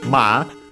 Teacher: she says ma, with the two a, so actually a longer a in pronunciation.